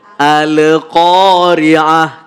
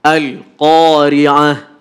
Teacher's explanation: Jadi enggak boleh ada pantulan. Karena huruf lam itu bukan bagian dari huruf qalqalah.